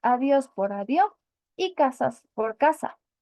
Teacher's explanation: coloquial suele aspirarse la s al final de la silabos y usualmente cambiar por una H si la siguiente palabra empieza en consonante